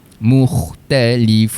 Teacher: pastikan berhenti pada makhraj huruf nun. Hujung lidah sentuh pada langit.